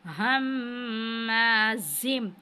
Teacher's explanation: हम्माज़िम, और ज़ा को हमने सख्ती के साथ अदा करना है और मीम के साथ मिलाना है और गुन्ना करना है, क्योंकि ये हरूफ यरमलून में से है, तो इदग़ाम की सूरत में गुन्ना करेंगे।